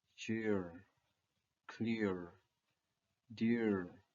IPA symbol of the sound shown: ɪr